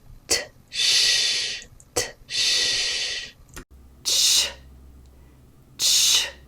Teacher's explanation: You articulate the t. So you start by articulating that voiceless alveolar stop, t. But then you release it into the fricative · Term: voiceless affricate